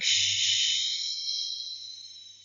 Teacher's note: If you try to take out the sound, you will observe that the front part of the tongue touches the back side of your alveolar ridge and front part of your hard palate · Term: sh sound